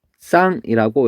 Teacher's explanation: 그 다음에 뒤에는 시옷. 시옷이 뭘로 바뀌냐면 쌍시옷으로 바뀌어요